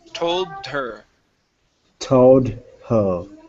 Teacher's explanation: pronounce that D put that D up against the word her